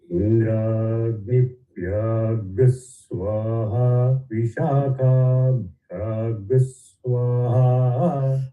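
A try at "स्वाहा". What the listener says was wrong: Yeah, only one correction. Swaha anudata there. Ha is anudata.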